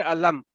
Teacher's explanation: یہ میم 1 سیکنڈ تک ادا ہونا ہے, اپنے مخرج کے اوپر ہونٹوں پہ آواز رک جانی چاہیے, علم بس اس طرح, تو آگے لمبی نہیں ہونی چاہیے. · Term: اظہار